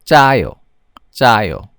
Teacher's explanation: how do you pronounce the tense consonant you say it with a higher pitch so Jo Jo almost no air is coming out it's almost